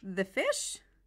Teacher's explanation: You can repeat an unclear phrase with rising intonation. When you repeat a vague or unclear word with rising intonation, you are asking the person to clarify.